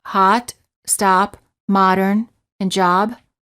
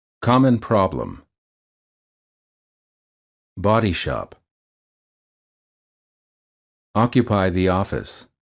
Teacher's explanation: the lips are apart as if you're yawning the lips are not rounded the tongue is relaxed and flat at the bottom of the mouth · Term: ah as in father